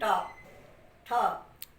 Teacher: तो वहाँ तक तो हमारी जिह्वा नहीं उलटती, लेकिन आप बोल के देखें ट ठ, थोड़ी सी जिह्वा पीछे की तरफ जा रही है, अर्थात तो वहाँ से उच्चारण के लिए सहायता ले रही है। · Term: मूर्धा